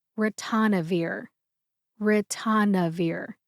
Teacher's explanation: emphasize the third syllable tan